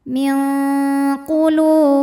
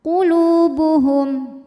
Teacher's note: lu mad tabi'i dhahiri karena ada waw sukun didahului dhammah, maka lam panjang 2 harokat